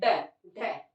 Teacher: इनका उच्चारण करते हैं तो जिह्वा एक झटका सा देती है, झटका लगता है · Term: उत्क्षिप्त